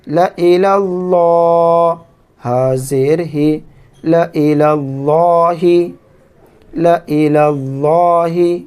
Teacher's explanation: اللہ کے لام سے پہلے زبر ہو تو اللہ کے لام کو موٹا پڑھتے ہیں۔